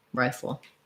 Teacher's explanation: i have this rye syllable that's long and my full syllable is very short almost no vowel in it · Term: first syllable stress